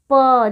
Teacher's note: प बोलते हुए दोनों होठ आपस में क्या हो रहे हैं? चिपक रहे हैं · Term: ओष्ठ